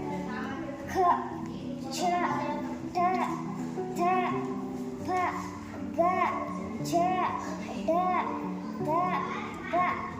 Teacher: ದೀರ್ಘ ಅಥವಾ ಹೆಚ್ಚು ಉಸಿರಿನಿಂದ ಉಚ್ಚರಿಸಲ್ಪಡುವ ಅಕ್ಷರಗಳಿಗೆ ಮಹಾಪ್ರಾಣ ಅಕ್ಷರಗಳು ಎಂದು ಕರೆಯುವರು